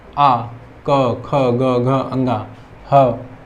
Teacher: इन सबको बोलने में हमारे कंठ पे कंपन होती है, तो इनका उच्चारण स्थान कंठ है